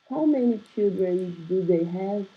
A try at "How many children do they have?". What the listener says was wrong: I need you to sound like a question. How many children do they have?